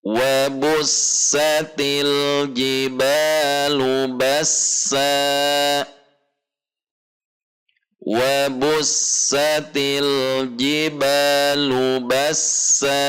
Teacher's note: Selanjutnya ayat kelima, wa bussa, sin mengalir, til alif lam sukun tidak memantul, tidak ditahan, ji tidak dibaca ci tetapi ji di tengah lidah dan langit-langit atas dengan makhraj yang sama dengan shin dan ya, ja, ji ba mad tabi'i, lu bassa, dua harokat dengan sin yang mengalir ar-rohwah.